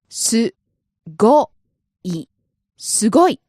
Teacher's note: The pitch accent here is on the go